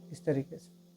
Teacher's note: یا مقصورہ ہے تو اس کو ایک الف کے برابر کھینچ کے بھی پڑھنا ہے